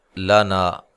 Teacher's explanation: لام کو باریک ادا کرنا ہے، موٹا ادا نہیں کرنا، لمبا نہیں کرنا۔